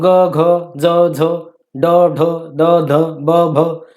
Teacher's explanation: घोष व्यंजनाच्या उच्चाराच्या वेळी काय होतं स्वर यंत्रामध्ये कंपन निर्माण होतात